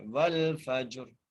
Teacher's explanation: را پر وقف کی صورت میں ہم نے را کو ساکن کر دینا ہے، ٹھیک ہے، اور را کو موٹا کر کے پڑھنا ہے